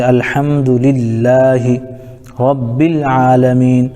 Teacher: الحمدللہ، الحم میں الف لام کے بعد حروف قمری میں سے ہا رہا ہے، اس لیے الف کو نہ پڑھے گا بلکہ لام کو پڑھیں گے، جیسے للہ میں لفظ اللہ کے لام سے پہلے زیر آ رہا ہے، اس لیے لفظ اللہ کے لام کو باریک پڑھیں گے